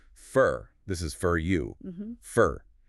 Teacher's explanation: The word for loses its or sound entirely and becomes fur. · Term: schwa sounds